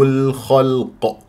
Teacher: الخاء مفخمه مرتبه ثانيه والقاف مفخمه مرتبه ثالثه واللام مرققه فلا بد ان نعطيها البينيه والترقيق ولا اكور الشفاه